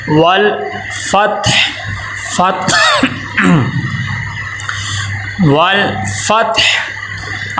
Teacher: قلقلہ بھی نہیں ہونا چاہیے اور ول ایسے غنہ کی طرز بھی نہیں ہونی چاہیے، ول آواز رک جائے